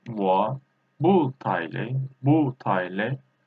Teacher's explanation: this 不 we change as second tone 我不太累不太累 I'm not very tired.